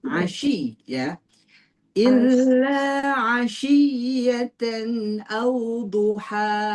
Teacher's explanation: Syin itu tafasi menyebar tuh